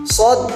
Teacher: bunyi ujung lidah dan gigi gesekan tidak bersuara